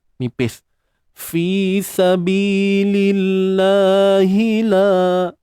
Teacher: Kalimah Allah ni kita baca dengan tarqiq. Nipis saja.